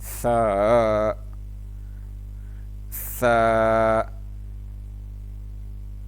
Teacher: سا کو پڑھتے ہوئے زبان کے نوک کو اوپر والے دانتوں کے ساتھ ٹچ کرنا ہے۔